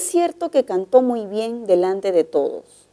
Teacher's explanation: la oración es enunciativa y el tono final es descendente